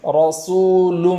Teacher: سین کے بعد جو واو مدہ ہے وہاں ایک الف کے برابر تاخیر بھی کریں گے۔ اور اس کے بعد والا جو حرف ہے لام، لام کے اوپر دو پیش ہے، اور اس کے بعد والا حرف میم ہے۔ · ہونٹوں کا سہارا لیے بغیر را کو موٹی آواز کے ساتھ پڑھیں گے، اس طریقے سے رسول را ایسا نہیں پڑھیں گے۔ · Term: پور